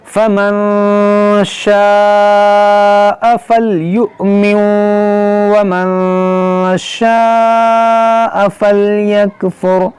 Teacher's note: حمزہ ساکنہ ہے، اس کو جھٹکا دے کر پڑھیں گے · نون ساکن کے بعد شین، یہاں پر اخفا کریں گے